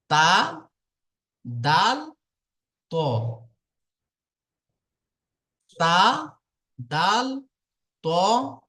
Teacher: জিহবার আগা সামনের উপরের দুই দাঁতের গোড়ার সাথে লাগিয়ে উচ্চারিত হয়